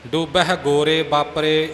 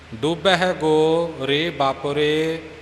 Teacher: ਕਈ ਗੋ ਦੇ ਨਾਲ ਹੀ ਰੇ ਨੂੰ ਜੋੜ ਕੇ ਗੋਰੇ ਬਣਾ ਦਿੰਦੇ ਨੇ